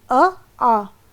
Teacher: ऐसे स्वर जिनके उच्चारण में ओठों की स्थिति सामान्य रहती है इसमें वृत्ताकार नहीं रहते हैं सामान्य रहते हैं तो उन्हें आ वृत्ताकार स्वर कहते हैं अब